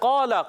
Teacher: मोटा अदा करेंगे क रफ मुस्ता में से भी है और यहां पर अलिफ से पहले जबर आ रहा है तो यह काफ के बाद जो अलिफ आया है अलिफ भी मोटा हो जाएगा